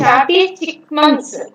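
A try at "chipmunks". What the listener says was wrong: చిక్ కాదు, చిప్.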